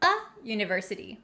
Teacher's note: the u in university doesn't sound like a vowel it has the yeah sound so we say a university not an university kind of tricky · On the other hand, a word that starts with a vowel, university. The U in university doesn't sound like a vowel. It has the y sound.